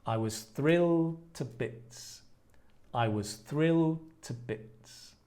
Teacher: you kind of make the L a little longer